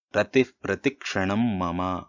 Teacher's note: విసర్గ పక్కన ప వస్తే హ పలకకుండా ఉఫ్ అని చెప్పేసి పలకాలి ఈ విసర్గని సో రతిహి ప్రతి అనేది తప్పు అవుతుంది రతి ప్రతి అని పలకాలన్నమాట మనకి